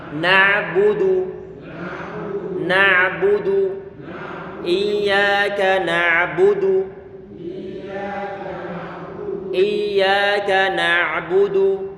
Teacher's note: Kafnya kita baca tipis, kemudian na'budu ini perlu berhati-hati, jangan sampai huruf ain di situ dikolkolahkan, nggak boleh na'a. Kita alirkan sedikit karena huruf ain dia termasuk di antara huruf yang punya sifat bainiyah, pertengahan antara syiddah sama rikhawah.